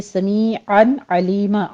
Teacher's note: عین وسط حلق سے ادا کرتے ہوئے تنوین کا قاعدہ اظہار حلقی ہے